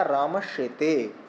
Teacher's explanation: दंत सकार के स्थान पर तालव्य शकार हमने कर दिया, तो प्रयोग बन गया रामश्येते।